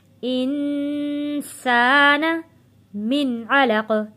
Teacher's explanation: سین کی آواز سیٹی جیسی آواز آنی چاہیے